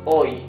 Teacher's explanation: H is mute, so you pronounce the O and the Y.